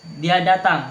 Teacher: Nada saya menurun untuk menunjukkan bahwa informasi itu pasti. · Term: nada turun